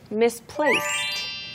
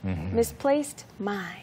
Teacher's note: 그래서 뒤에 D가 붙었다고 해도 D 발음이 아니에요. Right. It's like a T. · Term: T 발음